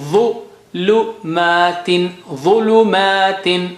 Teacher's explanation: ظ very thick and high sounding.